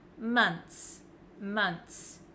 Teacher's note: is months months six months months so it looks like this it looks like there's just a TS at the end